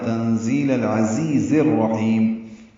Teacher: زی یا مدہ ہے، دو حرکات لمبا ہے